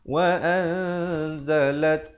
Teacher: Nun mati bertemu zai hukumnya ikhfa, disembunyikan bunyi nun matinya di belakang zai dengan kadar panjang 2 harakat. Asalnya wa'an, tapi bila datang zai, wa'anzalat, lam baris atas terus naik di atas ta.